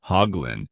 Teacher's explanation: In the UK, it's pronounced hoglin with the h softer and the vowels slightly shorter. Hoglin, giving it a gentler, relaxed tone. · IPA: /ˈhɒɡlɪn/